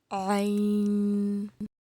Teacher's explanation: وسط حلق سے ادا ہوتا ہے یعنی کہ درمیانی حلق سے